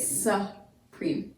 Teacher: the emphasis or the accent is on the second syllable, preme, and the first syllable then is going to be unaccented or unstressed. Okay, so because of that, that U takes on the schwa sound, which typically is the short U sound, which is why you get supreme.